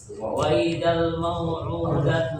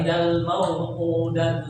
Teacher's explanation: Pakai hamzah, bukan pakai ain.